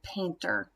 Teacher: our base word there is paint that's our first syllable that's accented